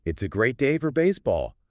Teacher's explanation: I'm stating a fact, but the rising pitch instantly makes it an inquiry. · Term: questions in statement form